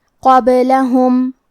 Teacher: قلقلہ کا معنی ہے حرف ساکن کو ہلانا، تو ہم حرف البا کو ہلاتے ہوئے یہ کلمہ کو پڑھیں گے · کلمت قابلہم میں حرف القاف کی ادائیگی زبان کے جڑ اور تالوں کے نرم حصے سے ہے. قاف حروف التفخیم میں سے ہے تو ہم یہ حرف کو موٹی آواز میں پڑھیں گے